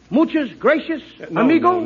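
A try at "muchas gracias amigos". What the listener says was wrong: No, no, no, not gracious. That word is gracias. You see, in Spanish, the C is pronounced th gracia.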